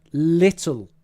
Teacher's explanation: it's just the L at the end and in the middle that's changing to a ooh, right? Not at the start.